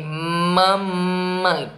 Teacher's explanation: E além do que, quando a gente também tem alguns sons que são nasais, né? Digamos o M, mamãe. Percebe que sai pelo nariz?